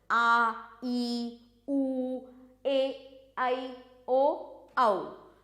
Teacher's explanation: इन स्वरों के उच्चारण में अधिक समय लगता है। मतलब ह्रस्व स्वरों की तुलना में अधिक समय लगता है। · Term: दीर्घ स्वर